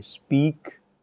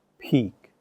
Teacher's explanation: the voiceless plosives are not aspirated